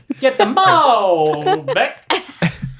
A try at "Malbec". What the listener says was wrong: No, it's you're putting the emphasis. You're putting putting the emphasis on the wrong syllable. Malbec. Beck.